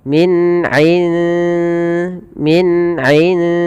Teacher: kita ada huruf nun sukun bertemu dengan Dal maka cara membacanya samarkan nunnya kepada huruf dal dan dia dibunyikan seakan-akan terdengar ada Eng ya tapi dia tidak Eng tapi dia menyamarkan langsung kepada makhrajnya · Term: ikfanya tipis